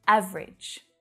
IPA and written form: 'æv ridʒ (Average)